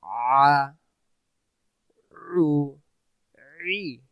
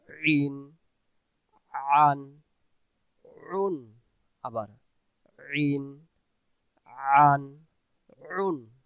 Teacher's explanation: তাহলে আইন অক্ষর গলা চেপে পড়ব।